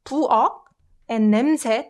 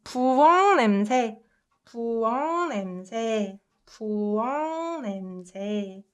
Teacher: this uk sound softens to ung sound as soon as it meets n sound